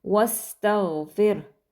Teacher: वस्तगफिर, यहाँ पर जो गैन है ये हरूफ मुस्तालिया में से है, गैन, इसको मोटा पढ़ेंगे, लेकिन आपने मेक श्योर करना है कि गाफ का साउंड ना आए